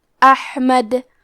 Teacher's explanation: آخری میں حرف دال ہے. اگر ہم یہ کلمہ پہ رکے تو دال پہ جزم سے رکیں گے، لہذا ہمیں دال کو قلقلہ سے پڑھنا ہوگا، احمد. اور اگر یہ کلمہ کو پوری آیت کے ساتھ ملا کے پڑھے تو ہم دال کے پیش کو ظاہر کریں گے.